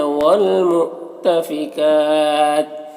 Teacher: وقف کی صورت میں یہ تا کا زیر سکون سے بدل جائے گا، تو پھر یہاں پر بھی مد عارض وقفی ہوگا